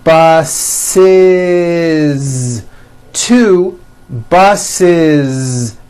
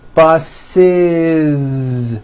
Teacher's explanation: the last sound you hear is that voiced z